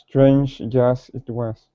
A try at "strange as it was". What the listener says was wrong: you're saying strain then it's like you're saying the word Jazz it was